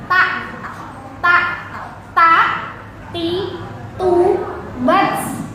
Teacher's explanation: Kalau ta tadi ujung lidah adanya di belakang belakang gigi seri. Nempel yang atas.